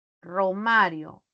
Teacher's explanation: la representación es con la vibrante simple. Con la vibrante simple y la vibrante múltiple, ¿no? Empieza con la múltiple acá y luego con la simple en dio.